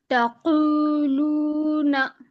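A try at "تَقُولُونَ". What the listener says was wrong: बहुत अच्छे,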